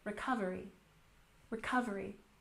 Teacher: Recovery has stress on the second syllable.